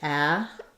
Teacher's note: Probably basically no vowel there, a syllabic M,